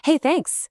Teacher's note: with a bright rising tone and you hear genuine sincerity. The word is identical.